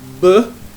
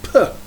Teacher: if you have a b and you add air, it becomes p. So this is an aspirated stop.